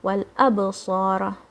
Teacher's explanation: Wow is going to join with the lam.